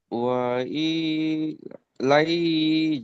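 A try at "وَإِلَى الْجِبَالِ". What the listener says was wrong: লাই নয় ইলাল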